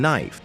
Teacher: the word knife was once pronounced NE after the shift silent K and I became AI as in knife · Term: Great Vowel Shift